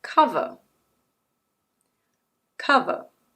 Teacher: The letter R is not pronounced. There's a vowel sound at the end. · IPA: /ˈkʌv.ə/